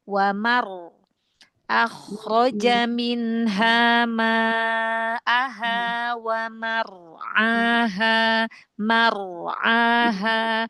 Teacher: Terus huruf ro yang dibaca tafhim ya, walaupun ro huruf tebal, tapi kalau dia dibaca tafhim seperti ro fathah, ro dhamma, ro sukun sebelumnya fathah, ro sukun sebelumnya dhamma ya. Maka ditebalkan, pangkal lidahnya dinaikkan ya, ditebalkan lagi huruf ro-nya. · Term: ro yang dibaca tebal